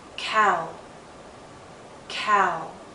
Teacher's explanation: our lips are moving in to a circle not a tight one as in ooh but approaching that